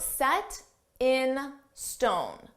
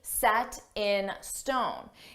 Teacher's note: notice we have a t between two vowels so we can pronounce that t as a soft d s s s so I take that sound and I connect